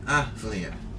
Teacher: Here's a TH, you don't hear it at all.